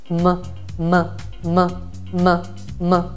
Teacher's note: Apro le labbra e faccio uscire il suono con m, con le corde vocali attivate